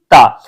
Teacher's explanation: तो जब आप ता बोलेंगे तो जब तक आपकी जो जिह्वा है आपके दांत को स्पर्श नहीं करेगी तब तक आप ता नहीं बोल सकते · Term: ता ध्वनि